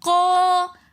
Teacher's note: तो कौला को हम 1 अलिफ की मिकदार खींच कर पढ़ेंगे, क्योंकि अलिफ मद्दा आ रहा है।